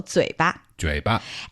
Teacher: Okay, so 嘴, that's the third tone. Yeah. And 巴 there is the light tone.